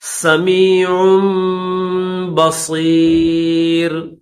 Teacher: عین کے بعد میم کی آواز نکالیں گے